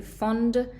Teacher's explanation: Fond, fond, c'est avec un o fermé